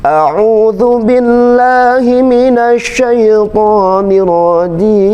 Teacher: A'udzu billah, kemudian turun di jimnya.